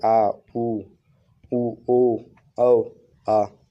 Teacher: जिन स्वरों का उच्चारण में जिह्वा का पश्चय भाग ऊपर उठता है इसे पश्चय स्वर कहलाते हैं।